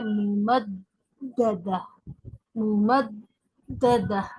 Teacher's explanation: कहने का मकसद ये है कि फिर यहाँ पर तीन दाल हो गए, तो उसी की रियायत रखते हुए आपको अदा करना है। यानी पहला दाल जो तजदीद वाला है वो सख्ती के साथ अदा करना है